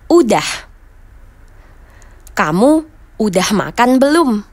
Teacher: kata sudah dalam percakapan sehari-hari juga sering dihilangkan huruf s-nya